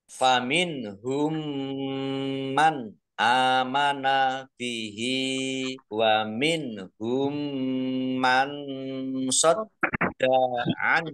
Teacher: baca mendengung, ya, biar tampak dengungannya ditahan kira-kira 2 harokat. Man amana, nun sukun bertemu dengan huruf alif, bacaan idhar, dibaca jelas. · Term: idgham mimi